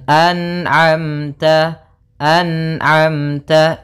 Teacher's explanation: jangan sampai terpantulkan, misalkan an'amta alaihim, an'amta, memantul huruf nunnya karena sifat nun tidak boleh mantul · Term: izhar halqi